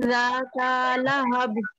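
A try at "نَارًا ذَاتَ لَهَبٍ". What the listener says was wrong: যাতা তাতে টান হবে না যাতা লাহাব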